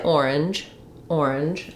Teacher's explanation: if I just say orange orange I probably say the J sound at the end